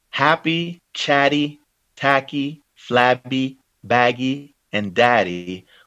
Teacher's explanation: Happy, chatty, tacky, flabby, baggy, and daddy form a family rhyme because they all share the same stressed vowel sound, the short A sound, and their succeeding consonant sounds belong to the same phonetic family, plosives